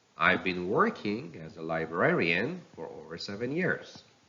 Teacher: years the whole sentence is broken up into three thought groups the first two talk groups end up with the content words working and librarian which both have a rising intonation and a slight pause afterward · The first 2 thought groups end up with the content words working and librarian, which both have a rising intonation and a slight pause afterward. The last thought group ends with ears, which has got a falling intonation because it is the last word of this statement.